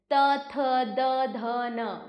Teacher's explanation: का उच्चारण स्थान दांत है त थ द ध न तो आप देखेंगे कि जो आपकी जीभ है वो आपके ऊपर वाले दांतों को स्पर्श कर रही है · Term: त वर्ग, तवर्ग